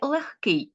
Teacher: у слові легкий ненаголошений е а також г який ми чуємо як глухий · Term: уподібнення